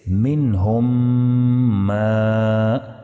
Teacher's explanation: میم ساکن کے بعد اگر میم متحرک آ جائے تو میم ساکن کو میم متحرک میں ادغام کر کے غنہ کے ساتھ پڑھیں گے